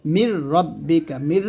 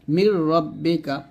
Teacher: র অথবা লাম যদি আসে তাহলে গুণনা হবে না, সেখানে মিলবে, শুধু মিলবে, গুণনা করা যাবে না। মির রাব্বিকা, মির এরকম গুণনা করা যাবে না, মির রাব্বিকা।